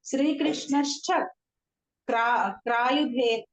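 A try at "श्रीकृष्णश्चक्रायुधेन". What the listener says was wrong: No, don't break there. Shri Krishna's Chakrayudhen.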